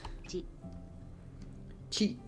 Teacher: Okay, these characters follow our pattern of a, I, u, a, and o, but there's two exceptions here. Okay, first exception is chi, which starts with the ch instead of the t and adds a soft h sound.